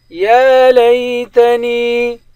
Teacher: یا لیتنی، یا پر کھڑا زبر ہے، نون کو یا کے ساتھ ملا کر دونوں کو ایک الف کے مقدار کھینچ کر پڑھیں گے، یا حروف مدہ ہے۔